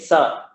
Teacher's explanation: The reason it comes under dantaha is because your tongue is in the exact same position as ta, tha, da, dha, na when you say sa